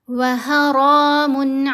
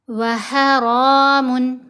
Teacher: ح کو گلے کے درمیان والے حصے سے ادا کیا، اور را کو ہم موٹا پڑھیں گے، اوپر کھڑا زبر ہے، را کو لمبا بھی کریں گے۔